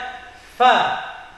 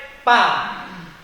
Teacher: Ujung 2 buah gigi yang atas ini bertemu dengan 2 buah bibir yang bawah, tengahnya. Bunyinya fa. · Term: huruf fa